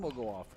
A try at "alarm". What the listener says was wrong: You really need to make sure you need the L in that. You said arm will go off. Alarm. Not his arm.